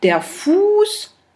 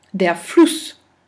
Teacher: On entend bien que Fuß, c'est beaucoup plus long que le OU de Fluss.